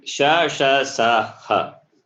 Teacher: All the four sibilants are Mahaprana.